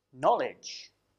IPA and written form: ˈnɒlɪdʒ (knowledge)